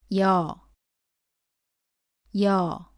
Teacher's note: 발음은 이에서 시작해서 어로 이어서 발음합니다